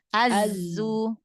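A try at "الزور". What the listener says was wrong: Ujung lidahnya jangan nempel ke gigi seri bawah. Jangan nempel ke gigi. Mundurin lagi dikit. Az-zu. Az-zu. Az-zu. Kayak Z. Nah, huruf zai sama kayak huruf sin. Jadi biar sofirnya jelas, begitu juga makhrajnya sama tuh. Zai mesin kan makhrajnya sama, ya.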